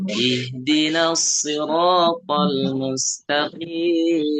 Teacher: Dibaca qi itu jangan lewat hidung.